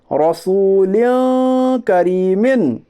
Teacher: करिए इजरा, लाम के नीचे दो ज़ेर की तनवीन है, दो ज़ेर की तनवीन के बाद हरूफ इख्फा के 15 हरफों में से काफ है, इसलिए इख्फाए हकीकी होगा। यानी दो ज़ेर की तनवीन को नाक में छुपाकर गुन्नाह के साथ पढ़िए, اسے اخفا کہتے ہیں۔